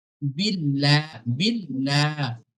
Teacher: আল্লাহ শব্দের লামের আগে যদি বা জের থাকে তাহলে আল্লাহ শব্দের লামটাকে বারিক করে পড়তে হবে।